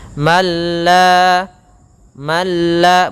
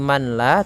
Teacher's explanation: apabila ada nun mati bertemu dengan lam, maka suara nunnya hilang mengganti menjadi suara lam, yang mana nunnya masuk kepada lam dan hilang nunnya menjadi malla. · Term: idgham kamil